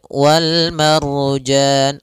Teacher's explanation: itu lamnya dibaca dengan jelas Suara lamnya Wal kemudian Wal Marjan ada Ro sebelumnya maka dia ro tebal